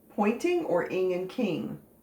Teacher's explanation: you really can't hear the g and the n g very well